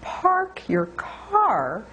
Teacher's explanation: make sure you hear an r as the tongue goes back and the tongue actually hunches back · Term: post vocalic RS